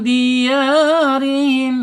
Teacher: dibaca tarkik karena ra ini berharakat kasrah. Ingat, ro ini mempunyai makhraj ada di alisan ya.